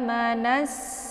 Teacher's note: Amanasu, ya, itu bacaan yang salah. Tapi langsung ditekan, langsung dileburkan nunnya ke dalam bunyi sin. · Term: alif lam asyamsiyah